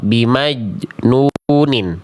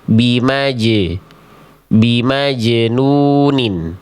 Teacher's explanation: Nah, ini enggak boleh dibaca begitu. Jim, jim itu dia punya sifat qalqalah, sifat memantul.